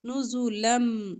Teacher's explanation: دو زبر کو میم کے ساتھ ملا کر ادغام کریں گے